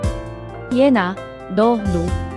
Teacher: 비음으로서 코를 통해 소리가 울리는 특징을 가지고 있습니다.